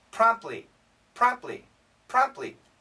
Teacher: Many people don't say the T.